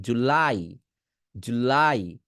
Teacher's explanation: আমি বলতেছি জুলাই, আপনি বলছেন জুলাই, জুলাই। আপনি জু টান দিতেছেন না। আমি লাই টান দিছি, আপনি লাইতেই টান দেন।